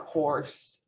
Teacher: or or has that automatic rounding